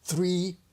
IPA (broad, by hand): θriː